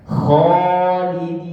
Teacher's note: Khalidina, maka alif tersebut mengikuti huruf yang tebal sebelumnya.